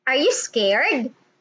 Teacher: the rising intonation or the two three three pattern